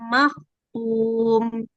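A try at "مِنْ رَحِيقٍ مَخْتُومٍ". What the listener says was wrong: jangan mirro, jangan terlalu banyak getaran ya, bukan bahasa Indonesia. Mirro tipis saja. Mirrahi, haknya juga tipis. Mirrahiqim makhtum.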